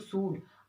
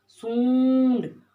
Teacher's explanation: नाक से भी आवाज आएगी और मुंह से भी आवाज आएगी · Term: अनुनासिक